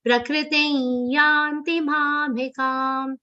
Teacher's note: the anuswar will be pronounced like a nasal ya consonant. The ya sound will come from your nose, ya. Ya has a very subtle aghat of na.